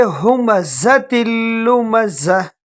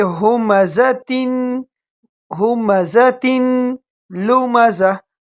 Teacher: یہ الگ نہیں ہے بلکہ یہ دونوں ایک ساتھ ہیں۔ ہمزۃ تا کو لام کے ساتھ ملائیں گے